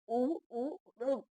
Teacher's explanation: अब देखो ये ओष्ठ में आ रहा है छोटा ऊ और बड़ा ऊ भी ओष्ठ में आ रहा है, जो इन्हें बोलने पर ऊ ऊ होठ गोल हो जाते हैं, होठों की बड़ी भूमिका रहती है